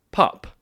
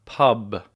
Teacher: Pup, voiceless, versus pub, voiced.